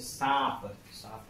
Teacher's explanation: जैसे सांप, सांप हम बोलते हैं तो नाक और मुंह दोनों का यूज होता है और दोनों से ध्वनि निकलती है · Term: अर्ध चंद्र बिंदु